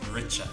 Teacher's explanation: We've got that ch sound on the T, richa.